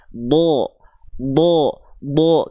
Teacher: Ketika huruf dod berharakat fathah, maka dia enggak akan dibaca d, tapi dia akan terdengar seperti vokal o. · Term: huruf yang tebal